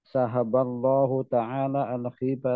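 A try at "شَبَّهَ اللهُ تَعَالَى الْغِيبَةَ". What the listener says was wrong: Syabbaha, bukan syahaba. Syabbaha. Al-ghibata bi. Syabbaha bi. Jadi sabbahallahu al-ghibata biakli lahmil akh.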